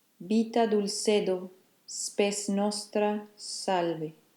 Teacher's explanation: semi-voiced bilabial which is the sound of the B and the V which can alternate